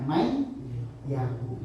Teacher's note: Man kalimat sendiri, yakulu kalimat sendiri. Ketika dibaca bersamaan bacanya mayyakulu. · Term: idgham biguna